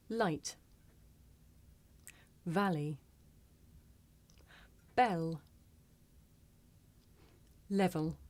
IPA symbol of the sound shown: l